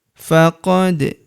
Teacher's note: huruf da berharakat sukun kita pantulkan atau kita qalqalahkan